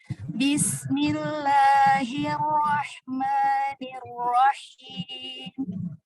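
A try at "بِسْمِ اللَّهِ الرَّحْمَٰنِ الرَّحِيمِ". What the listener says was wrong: Nah, jangan diseret juga.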